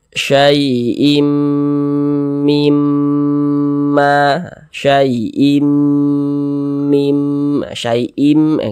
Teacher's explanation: kita temui mim bertasydid maka karena dia gunah maka kita gunahkan kita dengungkan jadi suaranya itu kita tahan kita panjangkan sejenak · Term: gunah musyaddadah